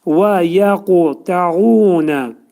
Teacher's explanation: Və yəquta'unə. Qaf hərfinin bir incəlik də var. Qutbizət hərfi kimi dedikdə, onun azacıq u'ya meyilli olur. Az-acıq u'ya meyilli.